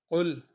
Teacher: دیکھیں اس میں قاف، یہ قاف کو ہم موٹی، یہ قاف موٹا ہے، اس کو ہم قل، بالکل گلے کے ساتھ والا جو ہمارا زبان کا حصہ ہے وہ ٹچ کریں گے اوپر کی سائڈ میں